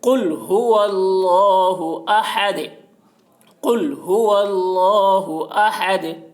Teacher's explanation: دال کے 2 پیش کو حالت وقف میں جزم سے بدل کر پڑھیں گے